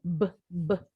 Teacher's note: Tadi huruf B, pita suara kita bergetar.